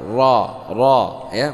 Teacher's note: Bukan ra, tapi ra. Dibaca dengan tebal. Bukan O dan juga bukan terlalu ke A.